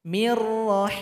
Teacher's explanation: Nun sukun berjumpa dengan ra, maka huruf nunnya tidak terasa lagi bunyinya karena telah tergabung kepada huruf ra. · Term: idgham bila gunnah